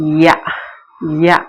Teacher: அவ்விடத்து யகர எழுத்தொலி தோன்றும். நாவின் அடி மேல்வாயாகிய அன்னத்தின் அடியை பொருந்தும்.